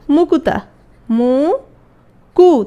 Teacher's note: তাহলে কয়ের সাথে একটা উ চলে আসছে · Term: মধ্য স্বরাগম